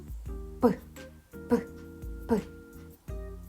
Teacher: Цей звук не можна ні потягнути, ні проспівати. Він ніби вибухає. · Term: звук П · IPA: [п]